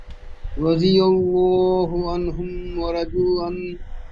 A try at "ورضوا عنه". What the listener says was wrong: ওয়ারাদু ওয়াও মাদ্দা একালি বেশি করে টান দিয়ে পড়তে হবে, একালি হয় না, কম হচ্ছে।